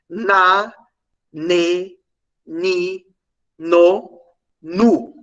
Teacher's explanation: a ponta da língua ela vai encostar nos alvéolos que é aquela carnezinha que fica acima dos dentes Então na verdade na no esse n aí é uma alveolar